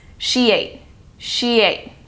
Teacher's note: It sounds like a Y is added in between the two words. So when saying it, it still blends and links together as one word, but sounds like this. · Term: intrusion